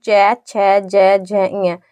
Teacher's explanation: हमारी जीभ होती है वह तालु से तालु को स्पर्श करती है